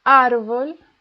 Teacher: El árbol, the stress is in AR